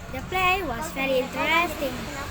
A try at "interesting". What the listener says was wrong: Nggak usah panjang. The play was very interesting.